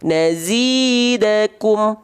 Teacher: Nah, berarti idhar syafawi cara bacanya adalah menjelaskan mim sukun dari kedua bibir